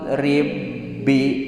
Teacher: Ba sukun teh kudu aya qalqalah. Rib kulantaran diasupkeun huruf nu kahijina otomatis qalqalahna oge teu aya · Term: idgham